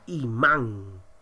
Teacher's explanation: cuando lleva la mayor fuerza de voz veamos la palabra imán la mayor fuerza de voz se encuentra en la sílaba man · La mayor fuerza de voz se encuentra en la sílaba man. Y vemos que hay ahora sí una representación gráfica. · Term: acento ortográfico